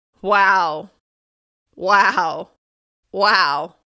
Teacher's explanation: The flatter intonation shows disbelief at this person's actions.